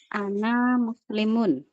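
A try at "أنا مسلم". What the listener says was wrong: Nah, ana itu dibaca pendek. Ana. Ana muslimun. Walaupun ada alifnya. Kalau di dalam ilmu tajwid, ana itu ada apanya, Bu, di atas alif? Sifir mustadir.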